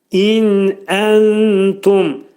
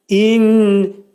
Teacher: İn burunda açıq şəkildə deyilir. İn. İndi ixvanı gizlədəndə başqa cür olacaq. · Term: açıq nun